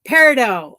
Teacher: No T sound in peridot.